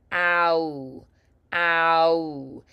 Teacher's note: keep your tongue low for the vowel and then move toward a back high position · And you're going to round the lips at the end. · we have one vowel sound that glides into another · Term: dip thongs